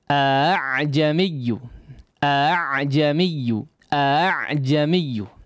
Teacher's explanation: hamzah yang kedua tidak dibaca secara jelas atau samar bacaannya ya, suaranya samar ya. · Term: tashil